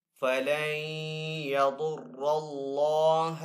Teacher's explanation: ضاد حروف مستعلی میں سے تو ضاد کو یہاں پہ پر پڑھیں گے. را کے اوپر زبر ہے تو اس لیے را کو یہاں پہ پر پڑھیں گے. اللہ عز و جل کے نام کو بھی یہاں پہ پر پڑھیں گے کیونکہ پہلے والے حرف کے اوپر زبر ہے. · نون ساکن کے بعد یہاں پہ یا حروف یرملون میں سے تو یہاں پہ بھی ادغام ہوگا، یعنی کہ ادغام والا غنہ کر کے پڑھیں گے. ضاد حروف مستعلی میں سے تو ضاد کو یہاں پہ پر پڑھیں گے. را کے اوپر زبر ہے تو اس لیے را کو یہاں پہ پر پڑھیں گے.